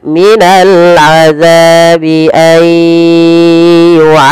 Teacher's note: idgham bi gunnah, yaitu memasukkan nunnya kepada huruf ya dan ditahan